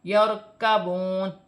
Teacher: کاف باریک ہے اور را ساکن ہے. را ساکن سے پہلے زبر ہے تو را موٹی پڑھی جائے گی